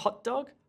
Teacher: There's no t sound there at all.